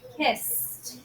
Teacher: For example, when we say kissed, because there is no vibration in the vocal cords, it's voiceless when we say the s consonant sound. It's simply efficient for your vocal cords to continue to not vibrate and pronounce the ED ending as a voiceless t, kissed. So why don't you give it a try?